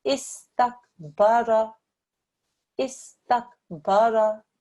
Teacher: I ensured that I pronounced the alif and the sin, the ta and the kaf, but I didn't spend too long on the sin, I didn't spend too long on the kaf. The sukoon has the effect of joining.